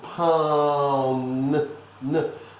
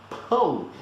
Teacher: Don't put your tongue on the top of their mouth to say the N. There's no N. It's just a nasal sound that continues.